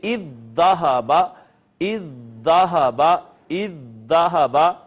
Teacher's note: پہلی دال کو ہم نے دوسری میں ضم کر دیا تو یہاں پہ آ گئی شد، لہٰذا اب اس کو اذ ذہب کی بجائے ہم پڑھیں گے اذ ذہب، اذ ذہب، اذ ذہب۔ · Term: ادغام متماثلین